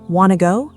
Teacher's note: Native speakers often say, "Wanna go?" very fast, very reduced, almost like one sound. The full sentence is, "Do you want to go?" But they cut it, they connect it, they make it short and musical.